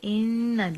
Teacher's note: ان نون اور میم دونوں مشدد جب ہوتے ہیں وہاں پہ غنہ ہوتے ہیں، اور غنہ گنگنی سی آواز ہوتی ہے، 2 حرکات لمبا کرنا ہوتے.